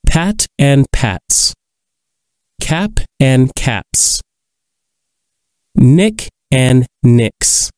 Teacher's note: Listen for the S sound of the possessive ending: pat and pats, cap and caps, nick and nicks. Because these words end in a voiceless sound, such as t, p, and k, the possessive makes the voiceless s sound.